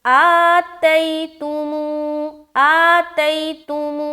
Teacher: واو مدہ میں ہم کھینچیں گے اور یا لین میں ہم نرمی کے ساتھ جلد پڑھیں گے، یعنی کہ کھینچنا نہیں ہے